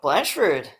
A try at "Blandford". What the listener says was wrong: It's Blandford. you gotta pronounce the D.